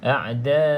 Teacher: pastikan hamzah ni kita baca 2 harakat.